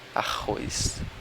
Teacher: o rr só tem um som que é de um r meio rouco